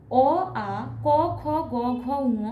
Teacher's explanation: হচ্ছে কণ্ঠ, অর্থাৎ এগুলি যদি আমরা উচ্চারণ করি তাহলে কণ্ঠ দেখব কণ্ঠ থেকে উচ্চারিত হচ্ছে, তাই এগুলিকে বলা হয় কণ্ঠ বর্ণ